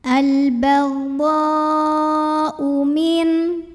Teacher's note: Maka cara membunyikan dhodnya ini adalah dipanjangkan boleh 4 boleh 5 harokat.